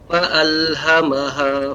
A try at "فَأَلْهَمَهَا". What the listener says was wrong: فَأَلْهَمَهَا Ya, ketika mengucapkan fa ini harus lebih banyak lagi juga hamznya fa. Fa'alhamaha, sekali lagi.